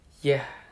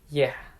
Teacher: This sound is known as the voiced palatal approximant or the voiced palatal glide. It is produced by raising the middle of the tongue toward the hard palate.